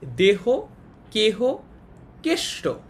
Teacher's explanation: হ কিংবা আকারবিহীন যুক্তধ্বনি পরে থাকলে এ সংবৃত হয়